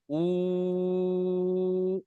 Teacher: উল্টো পেশটা হচ্ছে ও মাদ্দার সমতুল্য। অর্থাৎ ও মাদ্দার মত উচ্চারণ হবে। সেরকম এক আলিফ টান হবে।